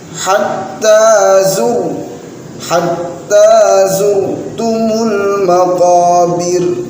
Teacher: Saat membaca zurtumu, nah rohnya dibaca tebal.